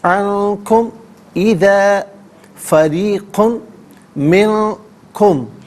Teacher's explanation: عنکم اذا فریق منکم، فریقن میں را کے نیچے زہر ہے، را کو باریک کر کے پڑھا جائے گا، اور قاف کے اوپر 2 پیش کی تنوین ہے، اسے میم کے ساتھ ملائیں گے، اور ناظرین میم کی آواز کو غنّے کے ساتھ ادا کریں گے